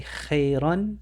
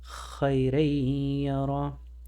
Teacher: The ya eats the tanween. We don't say خيرًا, but خَيْرًا يَرَهُ.